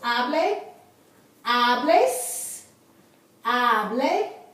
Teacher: The accent is on the next to the last syllable